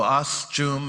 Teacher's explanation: That T and the Esh is the ch sound. It's the CH in English.